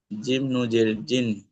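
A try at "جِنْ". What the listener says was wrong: নুজের নাই, নুন জের, একদম স্পষ্ট। জিম নুন জের জিন।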